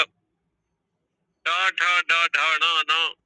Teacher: ये सब मूर्धा से ही जन्म लेते हैं